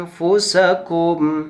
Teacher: Nah, di sana ada lafaz anfusakum, ada huruf nun sukun bertemu dengan fa. Ada huruf nun sukun bertemu dengan huruf fa, yaitu fa itu termasuk huruf ikhfa ya. Jadi wajib didengungkan dan wajib ditahan pula.